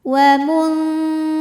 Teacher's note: Huruf ra dibunyikan secara tarqiq sebab ra berbaris kasrah, maka dibacanya tipis.